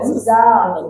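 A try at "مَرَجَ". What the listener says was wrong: bukan za, ja, jim, ya mah jim. Maroja.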